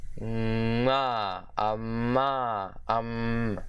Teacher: the voiced labialized bilabial nasal consonant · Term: labialized M